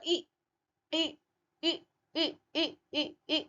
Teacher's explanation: संवृत पूरा बंद मुंह है। संवृत मतलब पूरा।